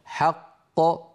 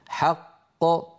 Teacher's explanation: لاحظوا بأن القلقلة للقاف الثانية وليست للقاف الأولى المدغمة. حق هذه قاف مدغمة، ق هذه هي القاف الثانية المقلقلة.